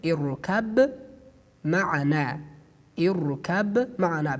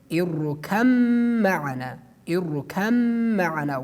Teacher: we delete the ba and we pronounce mim with a tashdid at the top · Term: idgham